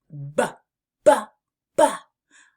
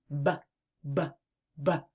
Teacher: The B sound is a voiced lip popper. It's like a soft pop when your lips come together. BBB. To make the B sound, start by pressing your lips together firmly and then releasing a puff of air while turning on your voice. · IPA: /b/